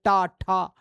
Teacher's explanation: जब इन वर्णों को बोला जाता है तो जीभ हमारे मसूड़ों से टकरा जाती है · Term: मूर्धा